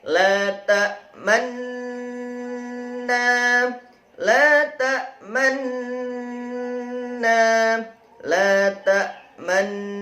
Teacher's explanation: Bacaan ismam, bibir mencucu di tengah-tengah dengung.